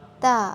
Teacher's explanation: ता में के पढ़ने में जबान को ऊपर वाले जो दांत हैं उनके पीछे जो मसूड़े हैं उनके साथ लगाकर पढ़ा जाएगा